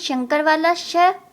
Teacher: क्योंकि इसका उच्चारण तालु से होता है, इसलिए इसे हम तालव्य श बोलते हैं।